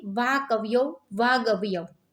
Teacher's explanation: પણ ક તો કંઠ્ય અઘોષ ધ્વનિ છે તેથી ક નો ગ સંભળાય છે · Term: ઘોષ થઈ જાય